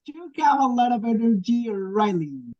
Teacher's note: Notice these statements with direct address. There is usually falling intonation and a pause before the name. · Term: Intonation with direct address